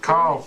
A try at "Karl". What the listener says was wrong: Not Carla, just Karl. Karl.